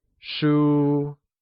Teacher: 书 is pronounced with a high level tone